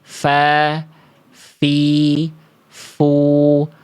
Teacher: Kalau dilafalkannya sama seperti ini, udah pasti salah satu sifat yang sering hilang pada huruf fa itu nafas. Sedangkan fa itu poin satu sifatnya namanya hams. Hams itu mengalir mengalir nafas.